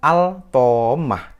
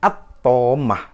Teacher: karena dia tasdid, maka dibacanya bukan al-tomah, tapi dibacanya at-tomah, langsung ke to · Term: idgham syamsiyah